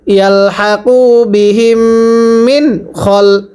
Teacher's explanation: নুন সাকিনের পরে খটা ইজারে হরফ, তাহলে নুন সাকিন স্পষ্ট করে পড়তে হবে।